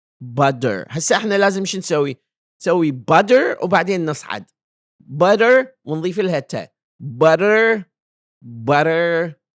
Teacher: now the flap T sound is a quick flick